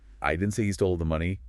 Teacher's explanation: If you stress I I didn't say he stole the money, it implies someone else said it.